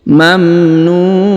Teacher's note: Huruf NU dipanjangkan boleh dua boleh empat boleh enam harakat karena di depan huruf NU terdapat wau sukun atau wau mati